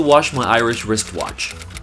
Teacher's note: you're gonna have to connect the W sound with the SH sound that makes a clash